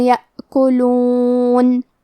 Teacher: کلمت یأکلون میں الف پہ جزم ہے تو ہم حمزہ کو ظاہر کریں گے